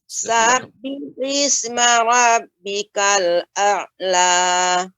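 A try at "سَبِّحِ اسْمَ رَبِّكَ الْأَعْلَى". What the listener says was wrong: Kemudian Ibu, pengucapan sab ya ketika membaca sab ya, jangan terasa seperti agak panjang Ibu. Ketika mengucapkan sabbihis seharusnya langsung sabbihis ya, tidak sabbihis. Nah, ini ya agak terasa panjang.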